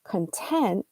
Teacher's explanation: if you highlight the last syllable in that same spelling content then what you're saying is that you're satisfied oh I'm content with that this you know I'm I'm happy